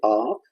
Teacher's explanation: जिन स्वरों के उच्चारण में मुख अधिक खुला है, जैसे इतना ज्यादा खुल गया, बहुत ज्यादा मुख खुल गया, तो वो विवर्त स्वर कहे जाते हैं।